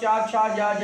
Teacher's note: चा वर्ग बोला जाता है तालु से